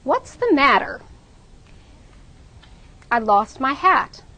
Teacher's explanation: So in those first two sentences, we're going to stress what's, matter, lost, hat.